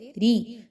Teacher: را کے نیچے زیر آ گئی تو را زیر ری، تو ایسی را کو باریک پڑھتے ہیں